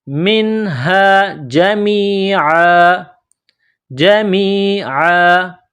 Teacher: منها جمیعا جمیعا، میم کو یا کے ساتھ پلس کرنا ہے، عین گلے کے درمیان سے عین کو نکالنا ہے